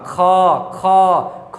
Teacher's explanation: तीसरा तो क हो गया, उसके बाद तीसरा, दूसरा नहीं, क ख नहीं होगा, ख ख ख में क्या, देखिए ख, बोलिए ख, क्या अंदर से लगा हकार जैसी ध्वनि है ना, मतलब क्या मुख से हवा ज्यादा निकलता है। ठीक है, पांचवा वर्ण अंग, अंग, इसमें भी हकार नहीं होता है।